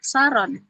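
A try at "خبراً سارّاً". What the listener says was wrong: saron itu ya. Atau harusnya ada tasdidnya ro-nya itu. Saron gitu.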